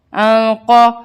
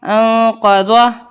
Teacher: ہم اپنی ناک میں آواز چھپائیں گے، اخفا کریں گے کیونکہ قاف حروف تہجی جو 15 لیٹرز ہم نے پڑھے تھے اس میں سے ایک حرف ہے قاف.